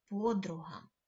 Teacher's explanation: в слові подруга наголос стає на звук о на перший склад